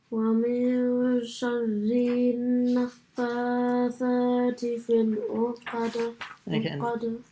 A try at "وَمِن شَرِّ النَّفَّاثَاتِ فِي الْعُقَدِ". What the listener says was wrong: You know the ra, sharri. Join that straight to the nun. So don't stretch the ri. Sharrin. Sharrin.